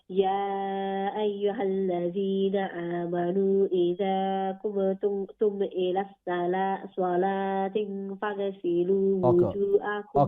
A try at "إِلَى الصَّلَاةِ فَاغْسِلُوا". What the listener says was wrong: Okay, صلاة. You said صلاة. With only one kasra, there is no kasratain, there is no ikhfa. إلى الصلاة فاغسلوا.